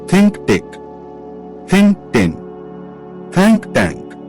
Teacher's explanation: Tha is soft with air through the teeth. T is harder with a quick stop.